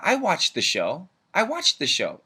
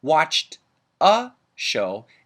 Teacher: the D and the th get linked together but we keep only the th